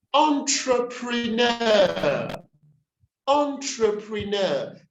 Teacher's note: the accent and the primary stress is on the last syllable